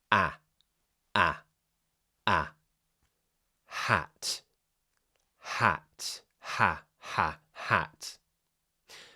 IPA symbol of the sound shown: æ